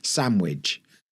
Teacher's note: some people will drop the D in sandwich